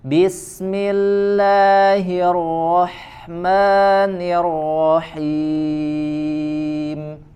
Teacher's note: sempurnakan huruf H ya alirkan lebih terasa aliran nafas dan suaranya